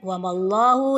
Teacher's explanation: lafdzul jalalah tebal karena diawali dengan Fatah